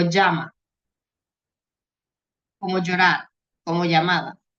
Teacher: Cuando son dos lambdas, se pronuncia como si fuesen dos L en español, con el sonido de la Y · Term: dobles lambdas